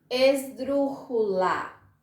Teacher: Escrevo esdrújula com J, mas eu pronuncio esdrújula com som de R.